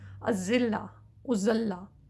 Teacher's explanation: وہ سیٹی والا زا ہے جس میں آپ اپنے دانتوں کو جوڑ لیں گے، اوپر نیچے کے دانتوں کو ملا لیں، اور زبان کا سرا جو ہے وہ پیچھے سے آ کے دانتوں کو ٹکرائے گا.